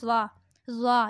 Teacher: یہ نرم حروف ہے، یہ زبان کی نوک سے نکلے گا